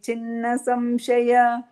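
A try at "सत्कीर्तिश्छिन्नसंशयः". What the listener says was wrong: ಸಂಶಯಾಗೆ ನಿಲ್ಲಿಸ್ಬಾರ್ದು, ಸಂಶಯ ಅಷ್ಟೇ, ಜಾಸ್ತಿ ಎಳಿಬೇಡಿ.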